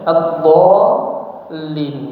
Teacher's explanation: harus dipanjangkan enam harakat baru kemudian diikuti dengan tasdid ya disertai dengan nabr